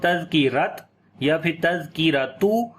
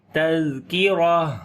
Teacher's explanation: کاف کو باریک پڑھیں گے، را کو موٹا پڑھیں گے، اور جب یہاں پر رکیں گے تو یہ تا ہا بن جاتی ہے اور اس کے اوپر 2 پیش بھی ختم ہو جائیں گی.